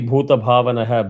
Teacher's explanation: bhu is two matra, ta is one, bha is two, va na is one, visarga is one. So, technically it should be 2 1 2 1 1 1.